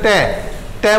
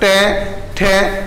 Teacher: जैसे ट बोलो तो टक्कर जो है वो जीभ की जो चोंच है वो जो दांत का जो ऊपर का हिस्सा है वहां पर अपने आप मारेगी टक्कर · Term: मूर्धा